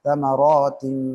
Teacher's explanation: இத்காம் தாம் பில் குன்னஹ் தமராத்தின் என்று குன்னாவுடன் ஓதணும்